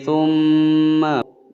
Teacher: Bil bayyinah, nah panjang 2 ketukan. Thumma, mim bertasydid ditekan ditahan 2 ketukan. Hukum bacaan gunnah musyaddadah.